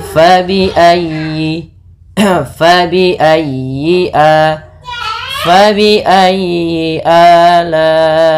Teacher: ditekan huruf ya-nya karena dia tasdid, dan huruf ya termasuk huruf lin yang lembut, di dalam pelafalannya jangan dihentakkan